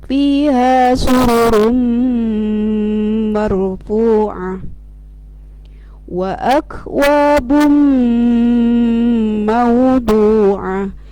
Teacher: Tanwin doma bertemu huruf mim, jadi suara nun atau tanwin domahnya hilang dan masuk kepada huruf mim, kemudian didengungkan, ditahan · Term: idgham ma'al gunnah